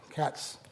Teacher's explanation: cats, there's a hissing sound, but there's no voicing. So that's not a Z sound, it's an S sound. So that's not plus voiced, it's minus voiced.